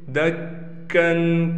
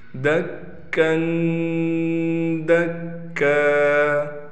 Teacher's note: کاف پر تھوڑا ٹھہراؤ کریں گے تشدید کی وجہ سے